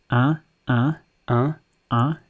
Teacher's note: the sound is a nasalized sound, meaning it's a vowel that changes if you block your nose, because the sound comes out through your nose as well as your mouth. So the sound in this case is un, which is un.